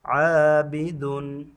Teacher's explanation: شاہدین پر بھی میں نے غنہ نہیں کیا اس تنوین پر اور عابدن پر بھی غنہ نہیں کیا. شاہدین پر تو اس لیے نہیں کیا کیونکہ آگے اس کے عابدن آ رہا ہے عابدن کے شروع میں عین ہے اور تنوین کے بعد حروف حلقی میں سے آ گیا.